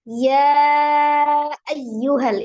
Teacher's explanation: Dia menjadi mad wajib muttasil, panjangnya 4 atau 5.